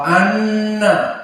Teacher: maka dia gunnah dari khaisum